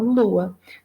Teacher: Então, houve um processo aqui, né, de nasalização e processo inverso é de desnasalização. Lua deixou de ser pronunciado como um som nasal